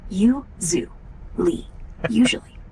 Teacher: Accent on the first syllable.